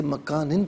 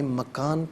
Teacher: اسے مکانن پڑھیں گے، وقف کی صورت میں مکان پڑھا جائے گا